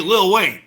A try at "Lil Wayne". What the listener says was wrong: It's not Little, it's Lil. Oh, you sounds like you're saying Little.